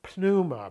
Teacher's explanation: I'm saying pneuma because the P is not silent in Greek. Greek generally, with a little bit of an exception within diphthongs, doesn't really have silent letters.